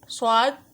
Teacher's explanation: حروف مستعلیہ میں سے ہے، اور اس میں سیٹی کی آواز نکالنی ہے